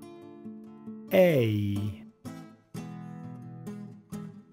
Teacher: ¿Notaste que el sonido empieza fuerte con la E y baja con la I?